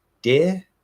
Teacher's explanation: right we're doing that sort of nasal plosive held d so we go into the d but it doesn't get released and instead it gets redirected through the nose um so it gets caught for a second and then goes